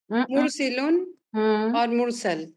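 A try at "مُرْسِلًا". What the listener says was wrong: آپ نے سائلنٹ نہیں کرنا آخری.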